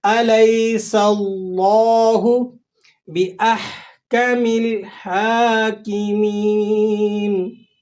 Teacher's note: لفظ اللہ سے پہلے والے حرف پر زبر یا پیش آ جائے تو یہ موٹا پڑھا جاتا ہے، اور اگر زیر آ جائے تو لفظ اللہ کو باریک کر کے پڑھتے ہیں۔ آپ نے یہاں پر لفظ اللہ کو موٹا کر کے ادا کرنا ہے